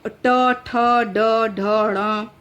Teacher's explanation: इसके उच्चारण में क्या होता है कि इसके उच्चारण में जो जिह्वा है वो कठोर तालु के पिछले भाग यानी मूर्धा का स्पर्श करती है। जिह्वा जो है कठोर तालु के पिछले भाग अर्थात मूर्धा का स्पर्श किया करती है। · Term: मूर्धन्य